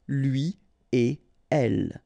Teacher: So after this conjonction et, like we've got here, you don't make any liaison. So no links after et. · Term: no liaison